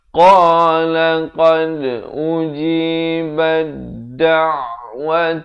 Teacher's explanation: Da' di pertengahan kerongkong.